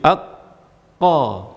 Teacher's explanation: kita menyebutkan huruf qaf ini mengenai langit-langit lunak